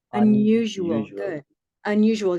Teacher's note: can you hear that there's an invisible Y in this word unusual